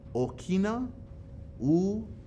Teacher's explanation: the intent of that okina is to cause a pause in english i believe it's called a glottal stop